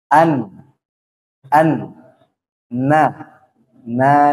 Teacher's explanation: ujung lidah huruf nun bertemu dengan gusi dua gigi seri atas gusinya bukan pangkalnya bukan giginya an an na na